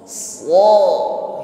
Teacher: Selain shad ini isti'la, bunyi hurufnya tebal, dia juga diiringi dengan bunyi shafir, ada bunyi desis ketika mengucapkannya. So, nah, sebelum so terucapkan, shafir sudah jalan.